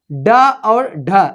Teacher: उच्चारण करते समय जीभ मूर्धा को स्पर्श करे और झटके मतलब जल्दी से, और झटके से नीचे आते हैं, नीचे आ जाए उसे उच्छिप्त व्यंजन कहते हैं।